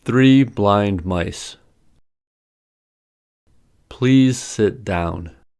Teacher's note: all words are stressed, so each syllable is stretched out